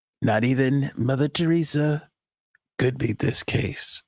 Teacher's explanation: It's very soft spoken. It's a little bit more of a breathy President Trump that we're getting recently.